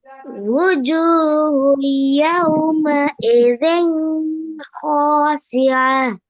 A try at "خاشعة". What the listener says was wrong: இன்னும் கொஞ்சம் ஹாவ தடிப்பா உச்சரிங்க. خاشعة.